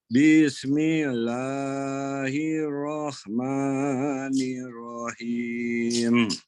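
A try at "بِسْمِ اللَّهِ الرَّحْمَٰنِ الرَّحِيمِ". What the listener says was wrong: Oke, coba bismillahnya ayunkan lagi Pak, lebih cepat ya. Itu masih kepanjangan per 1 ketukan. Bismillahirrahmanirrahim.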